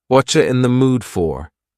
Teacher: the word you has been reduced to cha.